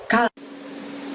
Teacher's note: ngucapinnya juga dari pangkal lidah tanpa menyentuh langit-langit, dengan lebih tipis, dengan lebih lembut.